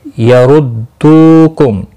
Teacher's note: رو پیش کی وجہ سے پر پڑا جائے گا. دو واو مدہ ہے، ایک الف کے برابر کھینچ کر پڑھیں گے